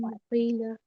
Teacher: होठों को जोड़ देंगे, नाक से आवाज आएगी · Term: اقلاب